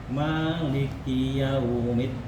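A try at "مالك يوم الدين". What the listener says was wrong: Lebih tipis Pak adanya. Maliki yaumiddin. Enggak middin.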